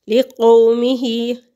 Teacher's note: واؤ ساکن سے پہلے لفظ پر زبر ہے تو واؤ لین ہے اور اس کی کھینچنے کی مقدار بھی ایک حرکت کے برابر ہے۔ لِقَوْمِهِ، ہا کھڑی زیر ہے اور اس کی مقدار بھی کھینچنے کی ایک الف کے برابر ہے۔